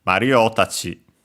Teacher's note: the accent is on the syllable before tachi itself. So yeah, in our case on the O, Mario tachi. · Low, high, high, and then low for the tachi itself.